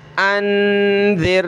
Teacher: نون ساکن پر ہم نے آواز چھپانی ہے ناک میں، کیونکہ آگے نون سے آگے کوئی بھی حروف ہلکی میں سے کوئی حرف نہیں ہے۔